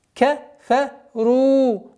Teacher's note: Долгота в размере двух огласовок даммы над буквой ра.